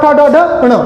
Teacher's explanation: ये मूर्धा से बोले जाते हैं